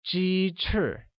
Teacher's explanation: Chicken wings becomes 鸡翅, which chicken or 鸡 uses a high level tone and wings or 翅 uses a falling tone, making it 鸡翅.